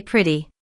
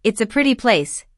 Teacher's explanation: that T between the vowels just melts into that soft D